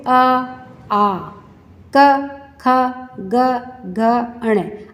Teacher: आप इन वर्णों को बोल करके देखिए, आपको पता चलेगा कि ये वर्ण आपके कंठ में से आ रहे हैं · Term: कंठया वर्णा, कंठया वर्ण